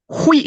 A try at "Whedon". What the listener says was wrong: How is it spelt? So then why are you pronouncing it with a fucking T?